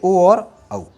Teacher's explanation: इसको कहते हैं कंठोष्ठ्य। कंठोष्ठ्य है तो कंठ और ओष्ठ से, तो इसका उच्चारण स्थल हो गया कंठ और ओष्ठ